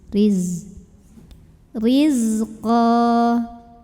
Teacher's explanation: zai punya sifat yang tidak memiliki lawan, namanya sifat sofir, jadi berdesis ya, seperti suara lebah.